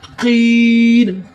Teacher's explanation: काफ कलकला है, काफ को मोटा करें। इस काफ को बारीक करना था, इस काफ को मोटा करें।